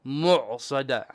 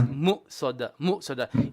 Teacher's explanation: In fact, the hamza comes from the bottom throat